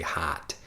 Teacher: And if you listen carefully, the reason I'm saying like ho, like an H-O sound, instead of the ha-ha sound that we would have in regular American English, and even listening to that, my nasal pronunciation, I'm speaking with my nose, it's a bit more of a Chicago accent, so maybe some other places it would say like hot, but I say hot, really using my nose when I speak.